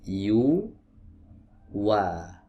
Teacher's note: huruf wawu juga keluar dari dua bibir yang dikumpulkan ke depan